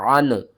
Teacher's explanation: عین کو آپ نے حلق کے درمیان والے حصے سے ادا کرنا ہے